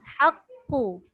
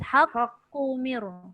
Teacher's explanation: Dia lekatkan pangkal lidah tu kat langit. Jangan turun. Bila turun dia jadi lantun.